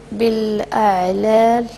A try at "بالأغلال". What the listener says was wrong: انتبه حرف الغين